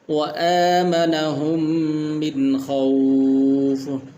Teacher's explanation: الذی اطعمہم من جوع، تو یہاں پر الذی اس کو بھی تھوڑا سا لمبا کرنا ہے، الذی اطعمہم من جوع وآمنہم من خوف، تو یہاں پر جو ہے نون ساکن ہے، یہاں پر غنہ نہیں کریں گے اس لیے کہ اس سے آگے خا ہے اور حروف حلقی میں سے ہے